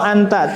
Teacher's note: Ada nanti yang melalui hidung ngalir dinamakan gunnah. Kemudian nanti suara juga mengalir lewat mulut.